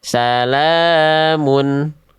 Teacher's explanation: itu dia dibaca fathahnya, vokal a-nya dengan kadar panjang dua harakat. Nama hukum tajwidnya adalah mad asli ya atau mad thobi'i.